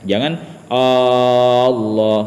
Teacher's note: yaitu pengucapan takbiratul ihram ya yang keliru, ya karena dia memanjangkan hamzahnya lafaz Allah. Ya, yang mana ketika kita memanjangkan lafaz Allah, hamzahnya lafzul jalalah, maka itu akan merubah makna takbir itu.